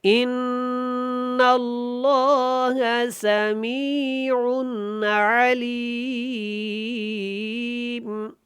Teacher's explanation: عین کو حلق سے ادا کریں گے، عن کے اوپر اخفا نہیں کریں گے کیونکہ اس کے بعد دوبارہ سے عین ہے، اس لیے یہاں پہ اخفا نہیں ہوگا، اظہار ہوگا کیونکہ یہ حروف حلقی میں سے ہے.